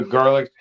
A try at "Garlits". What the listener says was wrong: It sounded like you called him Garlic instead of Garlits.